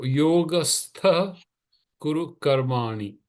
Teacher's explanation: The visarga, instead of being a h, changes into a kh sound. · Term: jihva muliya